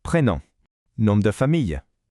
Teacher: that final M is actually silent. Instead, it creates a really nice nasal sound on the vowel right before it.